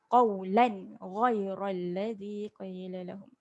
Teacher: Lan ni tanwin selari. Tanwin selari baris atas. Jadi kita baca dia dengan jelas. Jangan dengung.